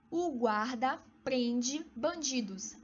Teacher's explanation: Apesar da palavra prende ser terminada com a letra E, sonoramente é como se fosse terminada pela letra I.